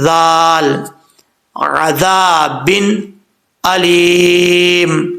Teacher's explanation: عین کے بعد ذال ہے، ذال بغیر سیٹی کے پڑھا جاتا ہے، آپ کو کئی دفعہ پہلے بتا چکا ہوں، اس میں سیٹی نہیں آئے گی. زبان کا سرا اوپر والے دانتوں کے اندرونی کنارے سے لگے تو ذال پڑھا جاتا ہے بغیر سیٹی کے